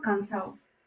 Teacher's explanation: Pérdida de la D intervocálica